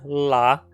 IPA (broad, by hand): la